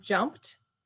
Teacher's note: ends with a P, which is a non-voice, it's just air